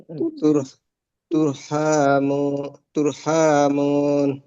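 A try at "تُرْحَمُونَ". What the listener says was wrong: হা লম্বা হবে কেন? পুরো হা এরকম হয়ে যাচ্ছে, হাটা লম্বা হবে না। তুর হামুন, তিন আলিফ। তুর হামুন, তুর হ্যাঁ, তিন আলিফ হবে কেন? জবরের মদর হরফের পরে হরফ ওয়াকফ করেছি।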